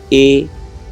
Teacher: कंठ के साथ साथ तालु लगे, आवाज़ कंठ से भी, और जो जीभ है वो तालु में जाए, ऊपर तालब में जाए, तो उसे कंठ तालु कहेंगे।